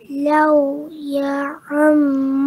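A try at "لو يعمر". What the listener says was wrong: Law ya'ammar. You, bukan ya.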